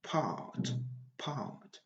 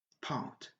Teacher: quand la lettre R vient après une voyelle, ce n'est pas prononcé en anglais britannique. Et par conséquent, on a une longue voyelle